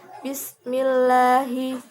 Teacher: lam jalalah tarkik di mana lafaz Allah bertemu dengan kasroh